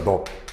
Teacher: 리을 비읍에 비읍이 발음이 되고 리을이 탈락됩니다